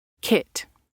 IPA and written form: kɪt (kit)